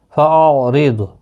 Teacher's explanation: را زیر کی وجہ سے باریک پڑھا جائے گا، ضاد حروف مستعلیہ ہے، پر پڑھا جائے گا، اس کو ہلانا نہیں۔